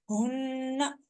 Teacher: ہا حروف حلقی میں سے ہے لیکن یہ حلق کے آخری حصے سینے کی طرف سے پڑھا جاتا ہے، تھوڑی سی آواز موٹی ہوتی ہے اس کی